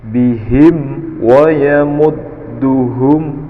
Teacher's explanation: Bihim ada mim sukun bertemu dengan waw, disebut dengan izhar syafawi, yaitu jelas pada bibir